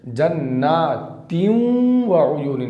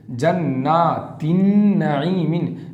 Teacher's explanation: नाक में आवाज़ जाएगी, सब में गुन्ना होगा